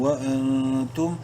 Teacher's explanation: نون ساکن کے بعد تا حروف حلقی میں سے نہیں ہے، اخفا کریں گے اس نون میں.